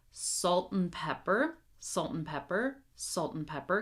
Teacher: one thing I want you to pay attention to is the word and. We're going to shrink this down until it's almost non-existent.